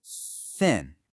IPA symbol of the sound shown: θ